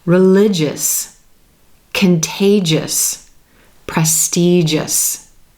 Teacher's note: we also want to be listening for that JJ soft G sound as in joke or jelly · The letters G and I are coming together to sound like j in each of these words.